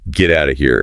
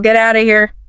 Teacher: Out of becomes outa. The F sound completely disappears, and the T becomes what linguists call a flap T.